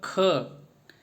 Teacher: स्पर्श व्यंजन कंठव्य ध्वनि, अघोष और महाप्राण ध्वनि है